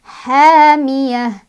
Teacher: Runha ini ada izhar karena ada tanwin dhammah bertemu dengan huruf izhar halqi ya. Izhar yang hurufnya dari tenggorokan yaitu ha. Cara bacanya si runnya ini tanwin dhammahnya dibaca jelas.